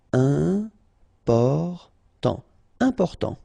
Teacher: you've got this EM, and after that it's a consonant, so it is here nasal.